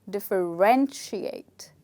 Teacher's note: we don't stress on the second syllable, we stress on the third syllable. So the word actually becomes differentiate.